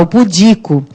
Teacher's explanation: qual é a sílaba tônica? É o di. O pudico é o di.